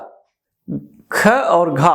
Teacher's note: जिसे बोलने में मुख से वायु ज्यादा निकालनी पड़े, महाप्राण, ह्यूमन टाइप के जो वर्ण है, धाकड़ जो वर्ण है, उन्हें हम महाप्राण वर्ण कहते हैं।